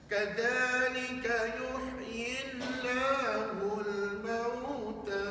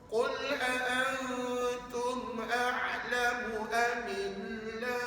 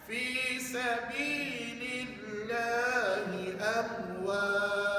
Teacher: Alif Lam Al-Jalalah yang dibaca dengan nipis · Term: Alif Lam Al-Jalalah Tarqiq